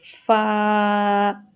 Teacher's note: اوپر کے دانت کو نیچے کے ہونٹ سے ٹچ کر کے فا کی آواز نکلتی ہے